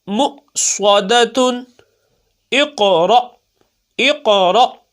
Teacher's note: دیکھیں قاف ساکن ہے، حروف قلقلہ میں سے یہاں قلقلہ ہوگا، لوٹتی ہوئی آواز آنی چاہیے